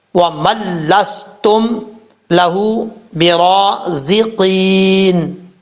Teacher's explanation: اب دوسرا جو لفظ ہے، دوسرے لفظ میں پہلے میم ہے، نون ہے، پھر لام ہے۔ اب میم کے بعد جو نون آ رہا ہے، اس نون کو نہیں پڑھیں گے، میم کو ڈائریکٹ لام کے ساتھ ملائیں گے۔ بعض اوقات لوگ سمجھتے ہیں کہ اس کو پڑھا جائے گا وہ من لستم لہو برازقین، ایسا نہیں پڑھنا۔ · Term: نون ساکن